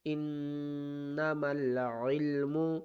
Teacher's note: نون مشدد ہے تو یہاں پر غنہ کریں گے